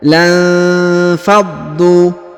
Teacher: Lalu didengungkan karena nun sukun bertemu fa ya. Jadi lamnya dibaca 1 harokat saja ya, bukan 2 harokat, karena langsung sambung masuk ke huruf nun sukun